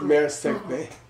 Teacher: R after an S is not pronounced at all